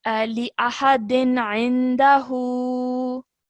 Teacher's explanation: we do not produce a nasal sound for 2 seconds, because the next letter is ayn. Okay, so the izhar noon sakin sound would be produced here.